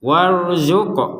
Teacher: huruf qaf bersukun ini juga dibaca dengan pantulan